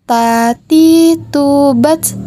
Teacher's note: dengan menyentuhkan ujung lidah dengan gusi gigi seri bagian atas dengan mengalirkan sedikit nafas perhatikan tatitu batch perhatikan ada udara yang mengalir ketika melafalkan huruf · Perhatikan ada udara yang mengalir ketika melafalkan huruf Ta.